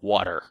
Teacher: one of the allophones of T is the voiced alveolar flap like in water that's a voiced sound it's quite different from all the other